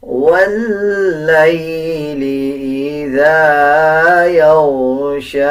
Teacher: واللیل اذا غائن کو پر یعنی موٹا پڑھا جائے گا، شین کو 1 سیکنڈ لمبا کر کے پڑھا جائے گا